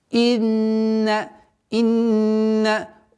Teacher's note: удержание в размере двух огласовок, назализация